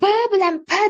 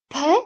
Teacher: Faqat B jarangli, P jarangsiz